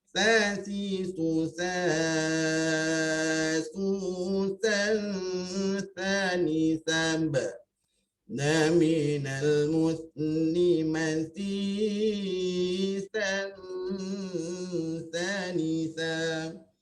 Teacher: hujung lidah kan, dengan hujung gigi sedikit kan, lidah hujung lidah tu terkeluar sedikit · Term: huruf tha